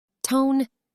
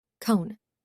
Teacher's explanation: my tongue tip went forward to the bumpy spot and it sounded like a t sound instead of a c or k sound · the back of my tongue up and back to stop the airflow